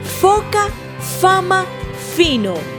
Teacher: se articula apoyando suavemente los dientes de arriba sobre el labio de abajo y se deja salir el aire